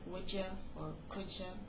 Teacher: One of them is coalescent assimilation, basically meaning that two sounds merge, merge together, such as d and y in becoming j